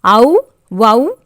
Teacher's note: ஔகார எழுத்து தனித்து வரும் இடங்களில் தனக்குரிய 2 மாத்திரை அளவில் முழுமையாக ஒலிக்கும்